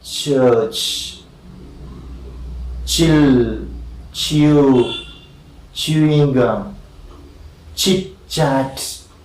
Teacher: Yeah, it is the hard palate, and pressure is held inside, but of course there is no plosion, slow release